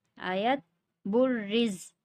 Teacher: را کے نیچے زیر ہے اس لیے را کو باریک پڑھیں گے